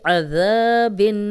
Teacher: ذال میں سیٹی کی آواز نہیں آئے گی، نرم پڑھیں گے